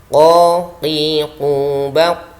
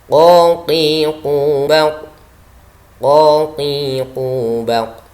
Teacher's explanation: Huruf qaf ini keluar dari pangkal lidah.